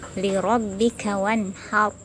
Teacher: Contoh ayat ini adalah ro-nya sukun bersifat tafkhim, karena sebelum ro sukun ada fathah, maka harus dibaca tebal.